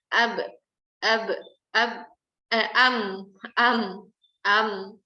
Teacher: huruf mim dia ada gunnah, maka harus terlibat di sini khayshum kita atau suara yang keluar dari rongga hidung. Kalau enggak nanti bunyinya sama dengan ba karena makhrajnya sama.